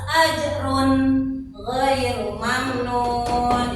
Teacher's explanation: Jadi tidak mendengung atau disamarkan jadi harus jelas. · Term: idharnya